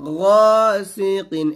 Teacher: ومن شر غاسق إذا وقب। এখানে গা বলবেন না, এটা গাইন মোটা করে বলবেন